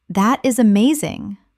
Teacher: When you say, "That is amazing." your tone rises with excitement.